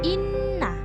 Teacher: Maka dibaca berdengung panjang dua ketukan atau satu alif. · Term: ghunnah